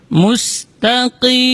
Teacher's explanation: huruf qaf dibaca dari aqsal lisan, di pangkal lidah.